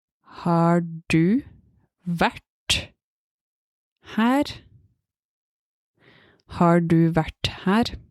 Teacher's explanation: In that sentence, there were 3 R's, but I only pronounced the last one.